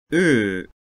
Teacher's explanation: Near close near front rounded vowel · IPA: ʏ